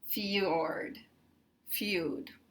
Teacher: You might think that we have this as a diphthong, 'feud' and 'fjord', but we don't really count this as a diphthong because this is a y sound